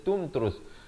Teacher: Tum dan tum itu izhar syafawi, jangan dipanjangkan.